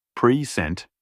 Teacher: stressing the second syllable in present